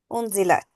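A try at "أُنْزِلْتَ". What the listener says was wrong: Why the third you say Unzalat? You all the three sisters have said it like that. Why don't you say Unzalta? Ta have fatah. Unzalta. You all are saying it Unzalat, Unzalat. I don't know why is you people are pronouncing like that. This is simply Fa'alta, Ja'alta, Nasarta, Unzalta. Ta have a fatah.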